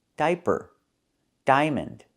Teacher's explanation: Here together the i, a make one sound. I that's the long i like high and by